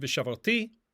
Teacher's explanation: because this is a vikatal form with the vav at the beginning, the stress is going to shift to the end.